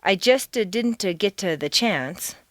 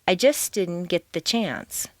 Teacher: because the ending st of just and the beginning d of didn't are so near each other in the mouth, it's not worth the effort to start the sound all over again, so they just flow into each other. You don't say, I just didn't get to the chance, but do say, I just didn't get the chance.